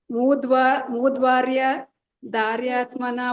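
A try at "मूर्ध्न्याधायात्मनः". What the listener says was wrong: ಸ್ವಲ್ಪ ಲಾಂಗ್ ಆಯ್ತು ಮಾತಾಜಿ.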